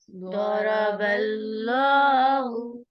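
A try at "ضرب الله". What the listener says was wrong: باللہ نہیں کرنا، اللہ کا نام یہاں پر ہم نے پر کر کے پڑھنا ہے۔ ضرب اللہ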